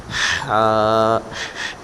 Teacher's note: حلق کے درمیان والے حصے سے دوسرا حرف جو ادا ہوتا ہے وہ حا ادا ہوتا ہے